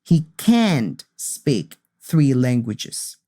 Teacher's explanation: I make some stress in the n and T sound and it's longer